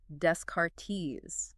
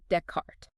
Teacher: Because you missed a fundamental pronunciation rule early on in this case, the French tendency to drop final consonants